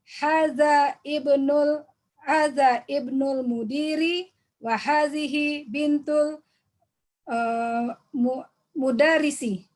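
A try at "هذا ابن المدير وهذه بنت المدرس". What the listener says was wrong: Jahit jidan. Oh, sangat bagus ya.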